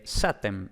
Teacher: en avéstico el número 100 se dice SATEM, es decir, la K ha evolucionado a S